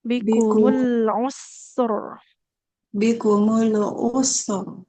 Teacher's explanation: Jadi antara sin dengan ro lebih lama mengalir huruf sin suaranya.